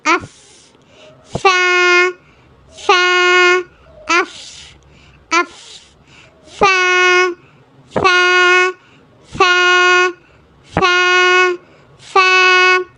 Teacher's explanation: மேல் ரெண்டு பல்லும் நம்ம கீழ் உதடு உதர வந்து பிரஸ் பண்ணும்போது கிடைக்கக்கூடிய லெட்டர் அப் ஃ அப் அப் ஃ இது ஒரு மெல்லினமான எழுத்து.